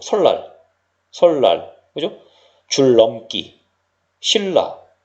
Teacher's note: 니은이 리을을 만나서 리을로 바뀌는 유음화 현상이 나타나고 있다는 걸 확인할 수가 있죠.